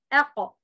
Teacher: يبقى أنا صوت الحرف القاف طلع معايا واضح وصريح مع القلقلة